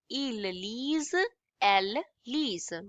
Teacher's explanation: We would not pronounce the ending ENT